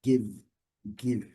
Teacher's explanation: O verbo dar, give, lembrando, letra E não sendo pronunciada, o último som que nós temos é o som do V. Então, a transcrição fonética nos traz uma pronúncia sem o I final, não give, é give, give, give, fechando o V, give, give.